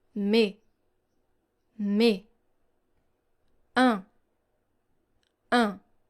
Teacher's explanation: So here you don't hear the sound S and you don't hear the sound N.